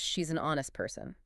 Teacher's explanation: the H is silent and the word starts with the O vowel sound. Failing to follow this results in the slightly abrasive, she's an honest person.